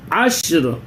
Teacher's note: والفجر ولیال عشر، عشر یہ آواز یہاں پہ ہلے گی نہیں، دیکھیں شین پہ سکون ہے، جزم ہے، لیکن آواز نہیں ہلانا ہے اپنے کو کیونکہ یہاں پہ قلقلہ نہیں ہوگا، یہ 5 حرفوں میں سے نہیں ہے۔